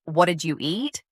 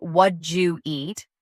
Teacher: Instead of what did you eat, you'll often hear what you eat, the did and you blend and simplify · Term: sounddropping